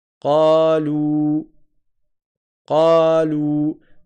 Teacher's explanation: Quatre temps, c'est quoi ? Ben, c'est ce qui correspond à une voyelle suivie de sa prolongation, suivi d'une autre voyelle et de sa prolongation. Par exemple kalou kalou j'ai une première voyelle.